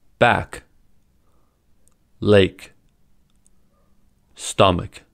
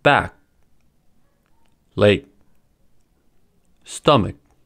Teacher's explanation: To hold a sound, we start to say the sound by blocking off the airflow where the stop normally happens, but we don't release the air. The final plosives in these words can be pronounced in 2 ways: released, audible, or unreleased, inaudible.